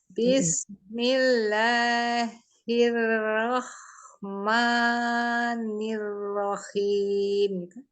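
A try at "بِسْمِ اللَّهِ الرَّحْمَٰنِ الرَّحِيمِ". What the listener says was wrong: Iya, nirrohim, khim masih khim gitu.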